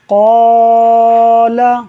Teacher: قال، دیکھیں قاف حروف مستعلیہ میں سے ہے، پر ہے اور الف سے پہلے آ رہا ہے، تو جب ہم قاف کو پر پڑھیں گے تو الف اس کے ساتھ خود ہی پر ہوتا چلا جائے گا